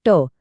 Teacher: मूर्धन्य म्हणजे जिभेचा शेंडा मागे वळून टाळूच्या वरच्या भागाला लावून